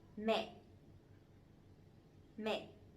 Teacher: the dấu nặng, the strong tone, so it has to be down and it has to be stronger a little bit